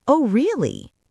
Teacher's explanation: The rising intonation on really shows you are surprised and, more importantly, that you are listening.